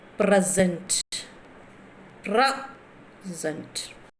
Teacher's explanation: Because where you are stressing, suppose your first word present, present. So SENT you are pronouncing lightly, but PRE you are stressing